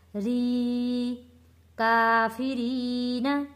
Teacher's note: یا ساکن سے پہلے زیر ہے تو حروف مدہ ہے، ایک الف کے برابر کھینچ کر پڑھا ہے